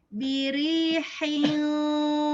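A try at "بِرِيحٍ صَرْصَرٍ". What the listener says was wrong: Nah, tebalnya nyusul, jangan biri hiyo hiyo. Nah, jangan gitu. Biri hiyo langsung hiyo. jangan nyusul. Jadi langsung tebal.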